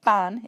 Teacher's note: they often pronounce words beginning with ‘v’ with a ‘b’ sound instead